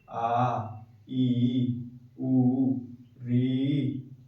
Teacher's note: 2 बार पलक झपकाने में जितना समय लग जाता है उतने समय में जिन वर्णों का उच्चारण होता है उन्हें हम दीर्घ स्वर कहते हैं